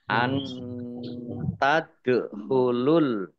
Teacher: nun sukun bertemu dengan huruf ta, bacaan ikhfa, dibaca samar-samar